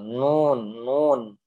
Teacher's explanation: Lihat gambarnya, hidung kita akan terasa. Kenapa hidung terasa? Karena huruf nun ini memiliki sifat yang namanya gunnah